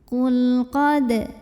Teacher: Di sini ada hukum tajwid namanya idhar mutlak atau lam mutlak ya. Karena lamnya sukun dan cirinya di depannya bukan lam lagi juga bukan ro. Maka lam ini dibaca dengan jelas idhar.